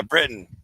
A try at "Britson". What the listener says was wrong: No, there's an S, not Britain. Britson.